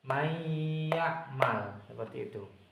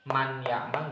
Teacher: Jadi suara nunnya ini dimasukkan menjadi suaranya huruf ya. Jadi nunnya ini dihilangkan menjadi suaranya huruf ya.